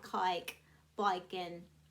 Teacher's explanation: long A, like cake, becomes an I